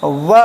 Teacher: वह बोलते ही थोड़ा सा होंठ सट रहा है तो होठ सट रहा है। ओठ के बगल में दांत बैठा हुआ है। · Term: दंतोष्ठ